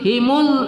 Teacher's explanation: agak lembut ya jangan himuz jangan ada as-sufirnya